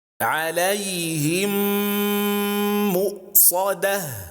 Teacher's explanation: we don't read the first Meem, and we instead read the second with a shadda and ghunnah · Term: idgham